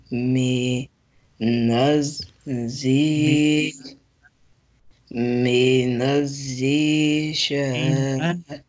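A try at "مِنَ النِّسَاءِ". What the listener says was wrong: This is noon also. Minan.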